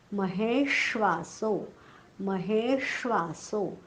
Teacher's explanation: पण हेच्या पुढे जे जोडाक्षर आलं आहे ना त्याचा जो पहिला अर्धा भाग म्हणजे हलंत पोटफोड्या श त्याचा हलकासा उच्चार करायचा. महेश्वासो हे वर जोर येता कामा नये आणि पोटफोड्या शचा उच्चार जाणीवपूर्वक करायचा. पोटफोड्या श म्हणताना जीभ उलटी टाळ्याकडे जाते पण टाळ्याला चिकटत नाही. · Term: आघात